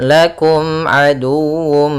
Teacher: Kemudian lakum aduwwum, kemudian dalam mim mati bertemu ain, kita baca dengan bacaan izhar syafawi, suara mimnya harus jelas. Kemudian aduwwum, nah, di sini harus dibaca juga dengan sempurna wawunya dengan tasydid.